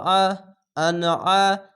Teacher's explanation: আইনটিকে মোটা করে গলা চিপে পড়বেন